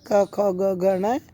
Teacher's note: कु से तात्पर्य है क वर्ग के पांचों अक्षर क ख ग घ न है और विसर्ग इन सभी वर्णों का उच्चारण स्थान कंठ